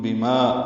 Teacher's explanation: ما الف مدہ ہے، 2 حرکات لمبا کریں گے